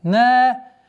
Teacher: Долгота в размере двух огласовок фатха.